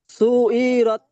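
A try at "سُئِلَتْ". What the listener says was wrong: জি, আইনটাকে আরেকটু করেন, সু ই রত, সু, সু ই রত, টান হবে না, সু ই রত।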